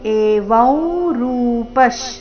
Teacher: ಅನುಸ್ವಾರದ ಉಚ್ಚಾರಣೆ ನಾಸಿಕಾ ವ ರೀತಿ